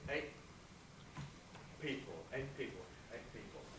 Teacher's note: we pronounce T at the end of a syllable before a consonant, not with the tongue tip, but at the glottis as a glottal stop.